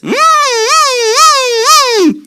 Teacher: It's got a labiodental fricative, it's oscillated, it's aspirated, and it's voiced. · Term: siren sound